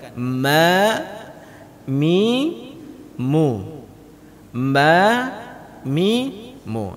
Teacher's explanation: dengan menutup mulut yang terdengar Huruf apa Huruf mim Kenapa karena makhraj huruf mim itu dari dua bibir dan dirapatkan